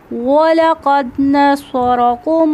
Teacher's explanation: तो यहाँ पे कलकला वुस्ता हो रहा है क्योंकि जब साकिन हर्फ पर वक्फ़ किया जाए तो कलकला वुस्ता होता है। स्वाद में सीटी की साउंड है और स्वाद हरूफ मुस्तालिया में से है और स्वाद में सिफ्ते सफ़ीरिया पाई जाती है, तो स्वाद में मोटी सीटी है। और ये मोटा लफ्ज़ है, मोटा पढ़ा जाने वाला।